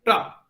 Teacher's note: अब आप ट बोलिए, ट जब आप बोलेंगे तो आपको देखिएगा कि आपका जो टिप ऑफ द टंग है वो अपर पैलेट से टच कर रहा है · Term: एल्वियोलर